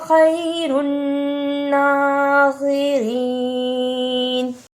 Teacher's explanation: بل اللہ خیر الناصرین، اسے خیر الناصرین نہیں پڑھنا، صاد کی جگہ پہ سین کی آواز نہیں آنی چاہیے